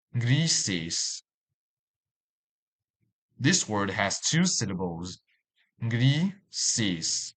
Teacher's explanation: And the stress is on the first syllable, since it has S endings. So we highlight the I in the first syllable.